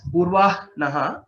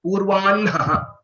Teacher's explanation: So it becomes H plus N, not Hn. Though some people say it as Purvah Naha, but the Vedic recitation tells us that it has to be pronounced as Purvan Naha.